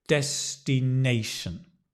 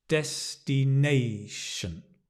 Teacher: So when you see this, it's a soft stress and that when you have the top one, it's the hard stress. So we stress nation, but there's a soft stress on des, destination.